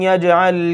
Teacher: اور یجعل یج جیم کے اوپر جزم آ گئی، قلقلہ کریں گے